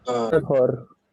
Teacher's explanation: at the end, you are not expected to pronounce r